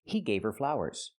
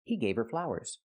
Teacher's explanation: You don't hear the H in her because her is not a stressed word.